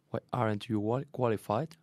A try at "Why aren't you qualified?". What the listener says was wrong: Aren't. One syllable, remember?